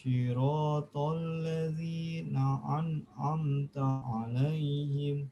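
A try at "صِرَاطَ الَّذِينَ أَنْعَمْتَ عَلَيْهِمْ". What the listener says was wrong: nah, a sama ain itu harus dibedakan. Walaupun itu satu makhraj, tetapi beda sifat, maka harus hati-hati. A itu sifatnya syiddah, harus tegas.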